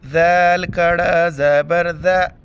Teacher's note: کڑا زبر ہے، ایک الف کی مقدار کھینچنا ہے